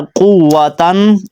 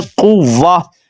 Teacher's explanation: ہم نے تہا کو بھی ختم کر دینا ہے، صرف ہا پڑھنا ہے